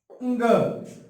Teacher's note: उच्चारण स्थान कंठ से किया जाता है और कंठ के साथ साथ नासिका से भी किया जाता है।